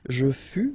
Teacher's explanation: keep in mind that final S is not pronounced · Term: final S not pronounced